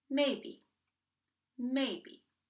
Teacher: we don't create a puff when B is located in the middle of a word